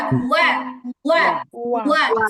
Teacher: ওয়াও জবর অ হবে না